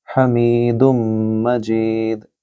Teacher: انکا، نون کے اوپر تشدید ہے، نون مشدد ہے یہاں، لہٰذا انکا حمید مجید، یہاں ہا کو گلے سے بولیے، می کو لمبا کریں گے کیونکہ یہاں یا ہے، میم کے بعد یا مد، اور دم مجید، یہاں بھی میم مشدد ہے، دال کو میم کے ساتھ ملائیے، اور جید، یہاں دال حروف قلقلہ میں سے ہے، لہٰذا اس کی بھی گونجتی ہوئی آواز ہوگی۔